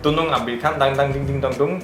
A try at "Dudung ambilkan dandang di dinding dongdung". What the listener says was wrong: Almost. You missed the D. Let's just say dandang ding ding dong dong.